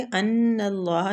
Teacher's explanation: ان اللہ نون مشددہ غنہ کریں گے